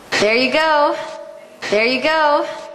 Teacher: You will need some lip rounding for that. There you going up in pitch, going up in energy, in volume.